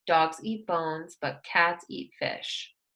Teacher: the stress is on the nouns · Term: stress on the nouns